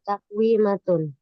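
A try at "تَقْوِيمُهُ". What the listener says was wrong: Hati-hati, bukan takwimatun, bukan tamarbutoh itu akhirnya. Nggak ada titik. takwimuhu. Takwimuhu itu takwimu tambah huwa. Takwimun tambah huwa, takwimuhu.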